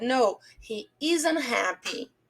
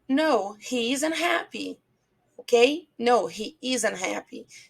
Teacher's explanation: Percebe que esse T a gente quase não pronuncia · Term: som muito fraquinho